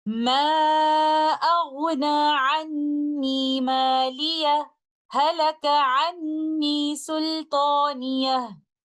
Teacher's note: the letter ha of the word maliya will not merge into the letter ha of the word halaka